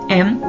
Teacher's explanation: Udara diarahkan melalui hidung dengan bibir tertutup